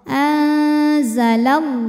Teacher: tengah-tengah tidak terlalu dekat tidak terlalu jauh dari Nun Bima anzalallahu lam jalalah dibunyikan secara tafkhim karena huruf sebelumnya berbaris fathah maka bunyinya tebal